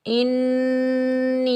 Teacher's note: हमज़ा को हम नून मुशद्दिद के साथ मिलाएंगे और यहाँ 1 अलिफ की मिकदार गुन्ना करेंगे